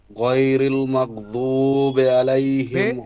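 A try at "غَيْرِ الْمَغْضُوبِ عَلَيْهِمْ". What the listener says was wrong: বে হবে না, ঠিক আছে, বে হবে না, ওখানে বি হবে। বে উচ্চারণটা আরবিতে কি হবে, মানে এই ভুলটাকে কি ভুল বলা হবে, কেউ যদি জানেন একটু হাত তুলবেন, আমি আলোচনা করেছিলাম। বে উচ্চারণটা কি হবে?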